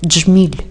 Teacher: робить м'яким приголосний ль і послухайте ще раз це слово джміль ці перші дві букви д і ж вимовляється як один звук